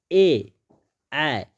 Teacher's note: ए, देखिए बोल कर देखिएगा तो आपको महसूस होगा कि कंठ तालु से क्या होगा, ए और ए का जो उच्चारण है वह कंठ तालु से, कंठ से भी उच्चारण हो रहा है और तालु पर भी प्रेशर पड़ रहा है